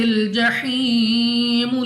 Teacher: یا ساکن سے پہلے زیر ہے تو یا مدہ کھینچ کر پڑھیں گے، 2 سیکنڈ تک لمبا کرنا ہے